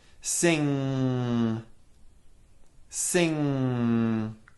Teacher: back of our tongue raising to touch our lowered soft palate blocking sound from entering the mouth and causing it to go through the nose